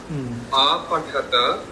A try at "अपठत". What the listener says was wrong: अपठत अयत्नत not अपठत small hrasva not apathat apatat